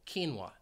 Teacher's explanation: the word does have two syllables the stress is on that first syllable · But the word does have 2 syllables. The stress is on that first syllable, quinoa. Now, You might hear it pronounced with three syllables, quinoa, in which case the stress would be on that second syllable, quinoa.